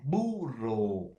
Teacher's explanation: la B es un fonema no oclusivo bilabial sonoro